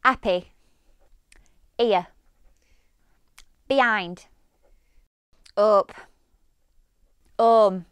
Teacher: Often, but not always, you'll hear the H omitted.